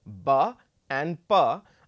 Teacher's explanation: a sound which is created by joining the the upper and the lower lip, constricting the flow of air and then releasing it. So, for example, ba and pa are bilabial plosives.